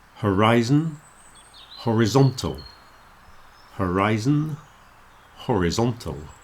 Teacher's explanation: the sound of the letter I in the middle is very different, and the stress is moving.